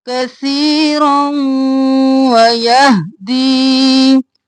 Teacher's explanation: رو کو واو میں مدغم کیا غنہ کرتے ہوئے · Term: ادغام مال غنہ